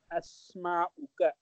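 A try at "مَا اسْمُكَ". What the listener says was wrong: मस्मुका, इसमें बेहतर है मीम को सीन के साथ जोड़ें और दोनों अलिफ को हम साइलेंट कर दें। मस्मुका,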